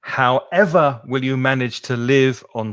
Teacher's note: we don't stress the first syllable, as I said at the beginning. We stress the second syllable.